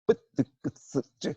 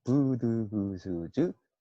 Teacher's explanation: 뿌뜨크스즈는 부드그스즈보다 에너지가 많이 들어요. 그래서 된소리라고 합니다.